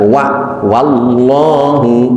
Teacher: wau dipatah itu dibaca Wawa bukan wo maka di sini kita baca wa wallahu bukan wo bukan wallahu